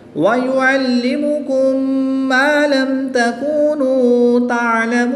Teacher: میم ساکن کے بعد دوسری میم آ جائے تو ادغام شفوی ہوتا ہے. یہاں پر غنہ کر کے پڑھیں گے